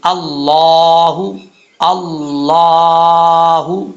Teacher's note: अल्लाह का ला जो है पुर पढ़ा जाएगा य याद रखिएगा लफ्ज अल्लाह से पहले जबर आ जाए या पेश आ जाए तो लफ्ज अल्लाह पुर पढ़ा जाता है यानी मोटा पढ़ा जाता है